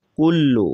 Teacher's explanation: کاف کو بریک پڑھیں گے، لام بھی بریک پڑھا جائے گا